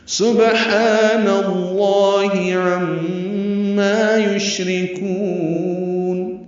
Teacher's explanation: سین صفیر کی آواز سے، با ساکن پہ قلقلہ، ہا وسط حلق سے ادا کریں گے.